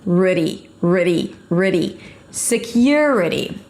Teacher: And then you reduce it to a schwa sound, a flap T, so it sounds like a D, and an E sound at the end.